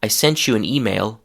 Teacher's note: if you put a word after that starts with the sound y, the pronunciation of sent becomes sench.